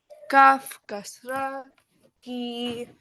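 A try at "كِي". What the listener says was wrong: No, not Kaf Kasra ki. Kaf Kasra Ya Sukun ki.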